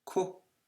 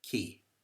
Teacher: One is pronounced on the back soft palate, and the other one is pronounced on the hard palate, which is to the front.